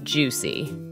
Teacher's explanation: Don't forget to stress the word on the first syllable.